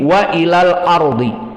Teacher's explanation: Maka waw muraqqaqah, hamzah muraqqaqah, lam muraqqaqah, dan alif muraqqaqah mengikuti lam